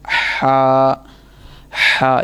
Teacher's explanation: वहाँ से ये अदा होगा हलक के दरमियान।